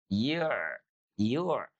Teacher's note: Jadi huruf ain itu ya, sekali lagi bukan dari rongga hidung, tapi dari mana? Dari tengah-tengah tenggorokan.